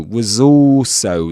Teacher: the Z sound at the end of was was links that word with the word also